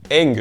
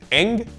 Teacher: Le e court ouvert /ɛ/ équivaudra en yiddish à un son e /ɛ/. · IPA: /ˈɛŋ/